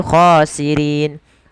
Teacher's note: ketika bacaan itu waqaf maka bacaan akhirnya atau huruf akhirnya dimatikan menjadi khosirin. Nah, sebelum huruf yang dimatikan itu ada huruf mad. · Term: mad arid lisukun